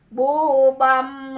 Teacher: Nah, ini tadi menghadapi ba iklan. Jadi suara nunnya masuk ke m, ke mim. Bu bam sambil gunah ditahan.